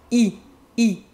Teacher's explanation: it's the same as the double e sound in English e but it's shorter in French